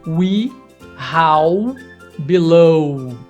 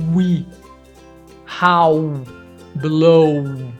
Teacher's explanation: a nossa boca né ao lábios lábios eles estão praticamente fechados ele é bem parecido com o som da letra u só que os lábios estão mais fechados do que na produção da letra u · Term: som do w